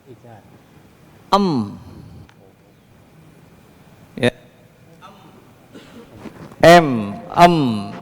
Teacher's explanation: menyamarkan bunyi mim sukun yang keluar dari syafawatain atau bibir ya mim itu makhrajnya adalah syafatain dua bibir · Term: mim sukun yang jelas